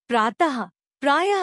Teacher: इसे विसर्ग कहते हैं। इसका उच्चारण ह की तरह होता है। इसका चिन्ह अह होता है, जैसे प्रातः, प्रायः आदि।